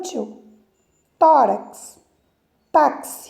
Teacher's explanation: paroxítonas a sílaba tônica mais forte é a penúltima